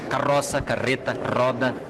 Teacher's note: No interior do Rio Grande do Sul, o R fica mais fraco. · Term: R fraco